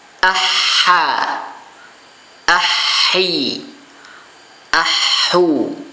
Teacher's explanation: tempat keluarnya adalah bagian tengah tenggorokan